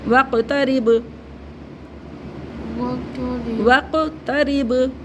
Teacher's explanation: काफ और बा दोनों में कलकला होगा इसमें दाल में भी कलकला होगा · قاف اور با دونوں میں قلقلہ ہوگا, اس میں دال میں بھی قلقلہ ہوگا.